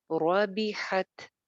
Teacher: رو موٹی کیونکہ زبر کے ساتھ ہے. ربحت، آگے تا آ رہی ہے، تا ساکن ہے.